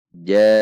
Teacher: Dibaca panjang 5 ketuk. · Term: muttasil